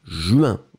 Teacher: nasal, pas de N prononcé